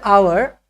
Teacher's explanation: It's not an H sound. The H sound is not prominent.